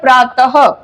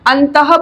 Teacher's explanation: अक्षर के पीछे दो बिंदु हैं इनको कहा जाता है विसर्ग विसर्ग का जो उच्चारण होता है वो ह होता है